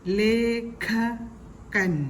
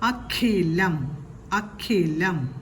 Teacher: ക എന്ന ശബ്ദത്തിന്റെ കൂടെ ഹയാണ് കേൾക്കേണ്ടത്